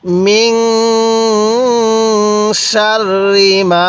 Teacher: এই নুন সাকিনের মধ্যে আমরা এখন গুন্নাহ করব কারণ নুন সাকিনের পরে শিনটি হলো ইকফার মিন সিন লাগবে এই